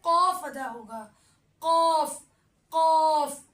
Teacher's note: تالو کے نرم حصے پہ زور آئے گا اور زبان کی جڑ ہوگی جو تالو کے نرم حصے پہ زور آ کے قاف ادا ہوگا